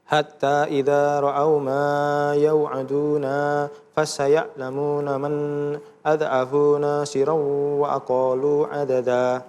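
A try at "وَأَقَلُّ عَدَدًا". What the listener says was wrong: Iya, di akhir ayatnya tuh ada tasdid ya. Wa aqallu. Jadi kalau ini ada tasdid seperti ini harus ada tekanan. Wa aqallu.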